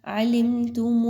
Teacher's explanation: without غنہ میم کی ادائیگی کی جائے گی، غنہ نہیں کرنا